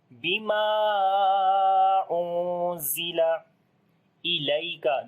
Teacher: On the noon we make ikhfa, za we read in light sound.